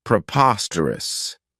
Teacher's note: This adjective has four syllables and the stress is on that second syllable